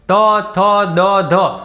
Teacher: આ ત, થ, દ, ધ આપણે બોલીએ છીએ ત્યારે આપણી જીભ છે એ દાંતને સ્પર્શ કરે છે. તમે બોલજો એકવાર ત, થ, દ, ધ, તો શું થશે કે આપણા દાંત સાથે જીભનો સ્પર્શ થાય છે, માટે તેને દંત્ય વર્ગના ત વર્ગના વ્યંજન કહેવામાં આવે છે.